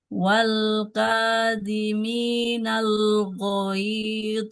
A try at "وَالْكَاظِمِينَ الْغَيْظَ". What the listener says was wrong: Jangan jangan ghaidh. Ghaidh. Kalau dilanjut dia tetap ya sukun mengalir suaranya. Tidak ghaidh. Wal kaziminal ghaidh. Ghaidh. Kemudian ini huruf dho sukunnya tidak al-ghaid.